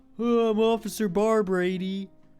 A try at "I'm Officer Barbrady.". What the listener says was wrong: Okay, he's got like a little bit more like nasally sound. Officer Barbrady. It's kind of just like a gay Mr. Mackey.